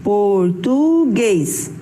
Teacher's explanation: A sua sílaba mais forte é o guês e ela está na última posição.